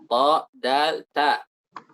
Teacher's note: Yang ke-8, taraful lisan, ujung lidah ma'a usuli thanaya al-ulya mus'idan ila jihatil hanakil a'la. Ujung lidah dengan tempat tumbuhnya gigi seri atas, naik ke bagian langit-langit atas. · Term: huruf nat'iyyah